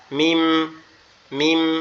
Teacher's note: মিমটা আমাদের দুই ঠোঁট একত্রে লেগে ঠোঁটের নরম জায়গা থেকে উচ্চারিত হবে